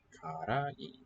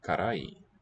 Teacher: note how the accent is up in the middle